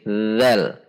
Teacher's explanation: Zal ada di bawah gigi seri atas dengan ujung lidah keluar sedikit.